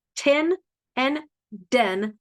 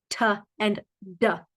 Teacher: feel that the air is not flowing when you first start that sound the air is being blocked